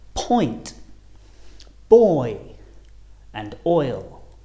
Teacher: They're on different rows again, but the shape of our lips and the position of our tongue also change a lot because we're going from the right all the way to the left, going from rounded lips to unrounded, starting on the O and finishing on the I or E, oi. As in the words point, boy, and oil.